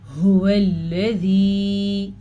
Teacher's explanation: ہا کو گلے کے آخری حصے سے نکالنا ہے